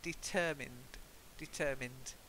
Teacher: The stress is on the second syllable?